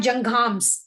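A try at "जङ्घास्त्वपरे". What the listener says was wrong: Not in. It's again that nga sound. Janghas.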